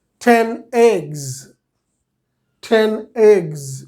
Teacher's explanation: গা সাউন্ড যেটা এগস, গাটা ভয়েসডের পরে, ভয়েস সাউন্ডের পরে যদি এস আসে তখন এস এর উচ্চারণ জ হয়, ঠিক আছে। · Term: জয়ের সাউন্ড